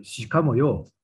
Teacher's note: with a rising and falling intonation by a speaker whose image is that of a vulgar man